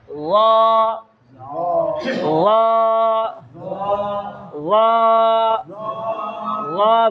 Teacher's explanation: ল বলার সময় জিহ্বার মধ্যখান এবং জিহ্বার গোড়া উপরের দিকে উঠতে চায়, যার কারণে কি হয়? ল মোটা হয়ে যায়।